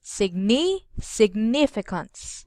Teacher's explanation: the stress must be on the second syllable, okay? That is read as significance.